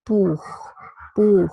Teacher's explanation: we have a voiceless velar fricative